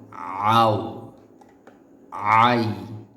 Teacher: আইন হরফটি যদি আমরা প্রপারলি উচ্চারণ করতে চাই সেক্ষেত্রে অবশ্যই গলার ভিতরে চাপ দিয়ে পড়তে হয়